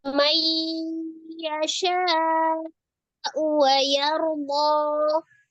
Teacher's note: Lalu nun sukun bertemu dengan ya, idgham biguna.